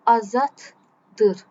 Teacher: Baxın, cinciltili d çevrildi t-yə tələffüzü.